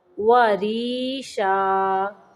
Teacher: را کو یہاں پہ باریک پڑھیں گے کیونکہ را کے نیچے زیر ہے